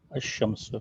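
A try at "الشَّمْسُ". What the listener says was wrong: अशम्सु। यहाँ पे क्या पढ़ाने जा रहे हैं, यहाँ पे लाम पढ़ा नहीं जा रहा, बल्कि अलीफ को डायरेक्ट शीन से मिला रही। शीन के ऊपर क्या है, क्या है शीन के ऊपर, तजदीद है।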